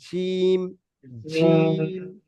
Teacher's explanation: জি, জিম, জিমটা মোটা আওয়াজ, যেমন জিভের মাঝখান আর উপরের দুটো মাড়ির মাঝখান, এই দুটো এক জায়গায় হয়ে জিম উচ্চারণ হবে। জিভের মাঝখানটা উপরের মাড়ির দুটো দাঁতের মাঝখানে যে অংশটা, ওই অংশই গিয়ে যুক্ত হবে, দুটো মাঝখানে এক জায়গায় হবে, জিম, জিম, জিম, জি, জিম, জি।